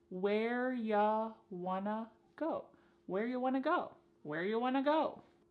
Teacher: You becomes y and want to becomes wanna. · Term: reduction